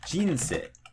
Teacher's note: maybe it drops right after the first syllable, like jinsei